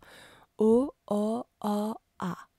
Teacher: Les deux A sont ouverts, mais A est postérieur, je prends derrière A, tandis que A est antérieur. Ici, on peut commencer au O mi-fermé postérieur pour finir au A ouvert antérieur.